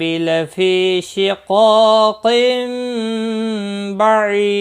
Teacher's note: فی یا مدہ ہے، قا الف مدہ ہے، دونوں کو 1 الف کے برابر کھینچ کر پڑھیں گے